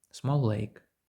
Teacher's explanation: ці звуки щоб вони стали одним цілим так буде набагато простіше Тут взагалі немає пауз немає перерви в звучанні